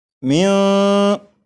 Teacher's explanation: آپ غور کریں کہ یہاں پر ایسے معلوم ہو رہا ہے کہ جیسے میم کے بعد جو آواز ہے وہ اوپر کی طرف جا رہی ہے